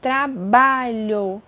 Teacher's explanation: Exemplo de paroxítona. trabalho, a minha penúltima sílaba, que é a mais forte, então é classificada como paroxítona